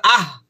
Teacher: হলকের শুরু হইতে উচ্চারিত হয় দুইটা, একটা হলো হামজা আর একটা হলো হা।